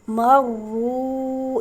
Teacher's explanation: میم را زبر مر، را واو پیش رو، مرو۔ یہاں پر مارو نہیں پڑھیں گے، میم کو را کے ساتھ ملائیں گے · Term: تشدید